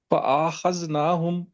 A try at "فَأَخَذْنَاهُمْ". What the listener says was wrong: چھوٹا کر رکھے فَأَخَذْنَاهُمْ،